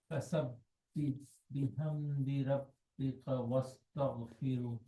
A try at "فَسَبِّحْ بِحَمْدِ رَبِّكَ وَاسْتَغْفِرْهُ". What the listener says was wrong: Why are you doing firu? Why are you doing that? Are you stopping here? But are you stopping here?